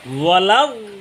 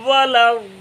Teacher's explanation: জিহ্বার গোড়ার কিনারা উপরের মাড়ি দাঁতের গোড়ার সঙ্গে লাগাই বলবেন, ঠিক মোটাই হবে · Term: 7 নম্বর মাখরাজ